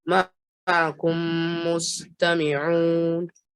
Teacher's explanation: I could hear the ayn from your throat.